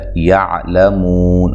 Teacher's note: عین کو واضح نکالنا ہے، لام کو باریک پڑھنا ہے، موٹا نہیں کرنا اور لمبا بھی نہیں کرنا۔ مو واو مدہ ہے، وقف کی صورت میں مد کر سکتے ہیں۔